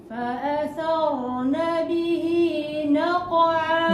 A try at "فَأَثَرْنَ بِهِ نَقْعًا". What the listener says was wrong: Kau kena buka rahang lagi.